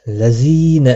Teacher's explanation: زی یا مدہ ہے، 1 الف کے برابر کھینچ کر پڑھیں گے